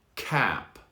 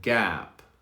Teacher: the k is more explosive at the beginning